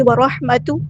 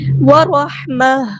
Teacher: ہا کو وسطی ہے لیکن تھوڑا سا ادا کریں گے, را ہمارا یہاں پہ ہیبلیٹر ہے. اور گول تا کو ہاں میں چینج کر دیں گے جب ہم وقف کریں گے